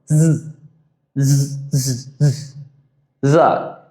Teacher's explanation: It's a buzzing sound.